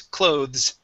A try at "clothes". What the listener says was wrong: Okay, give me a Z sound at the end. Clothes.